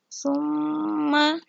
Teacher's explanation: hukum bacaannya guna karena ada mim bertasydid